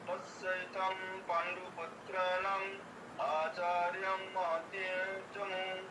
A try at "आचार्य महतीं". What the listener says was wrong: হ্যাঁ আচার্যং হয়ে গেছে আচার্য আচার্য আচার্য